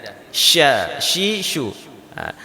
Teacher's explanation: Shin itu tempat keluarnya dari tengah dari tengah lidah